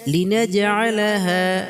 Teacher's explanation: লিনাজআলাহা জিমে কলকলা হবে, হায় আকালি পরিমাণ টান হবে।